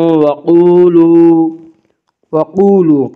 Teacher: قاف کو پر پڑھیں گے، قاف حروف مستعلیہ میں سے ہے، حروف مستعلیہ 7 ہیں جن کا مجموعہ خص ضغط قز ہے، یعنی خا صاد ضاد غین طا قاف ظا، یہ 7 حروف ہمیشہ ہر حال میں پر پڑھی جاتے ہیں۔